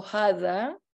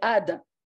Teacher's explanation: the Jews don't pronounce the ha, so they say, they would say ada.